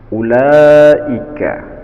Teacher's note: Ulaika, ada hukum bacaan mad wajib muttasil dikarenakan ada mad tabi'i atau mad asli bertemu dengan huruf hamzah dan berada pada satu kalimat yang tidak terpisah. Panjangnya wajib 2,5 alif atau 5 huruf, atau lebih mudah 5 ketukan jari.